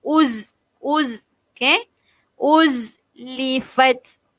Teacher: Za ni adalah sifat dia sofir. Okey, sifat dia bunyi z.